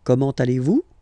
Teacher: it's a question, so raise a little bit your voice at the end